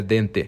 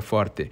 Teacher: A gente aqui fazia o que se chama de não alçamento de vogais médias, né? A gente dizia dente, a gente dizia forte.